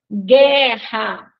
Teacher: letra que não tem som na nossa língua né guerra guu vejam que nós não escutamos o som do U né Então aí a gente tem Gu que é um dígrafo